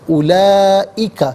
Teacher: اولئک، لام پر کھڑا زبر، اوپر مد کی علامت، یہ مد متصل ہے، مد واجب بھی کہتے ہیں، مد لازم بھی کہتے ہیں۔ منیمم اس کو 4 الف کی مقدار کھینچ کر پڑھنا ضروری ہے، میگزیمم اس کو 6 الف کی مقدار کھینچ کر پڑھ سکتے ہیں۔